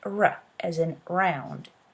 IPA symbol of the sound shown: ɹ